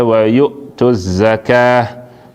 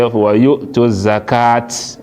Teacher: When you stop on top ta marbuta, you stop like say you stop now on top ha.